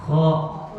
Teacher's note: Maka kata ujung tumpul. Dari ujung tenggorokan maka disertakan dengan menaikkan pangkal lidahnya.